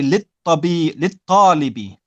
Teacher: the ta is a sun letter. So we don't pronounce the lam.